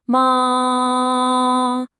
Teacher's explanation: It's high, it's flat, and it's steady. Just imagine you're singing a single, comfortable note and holding it. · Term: singing tone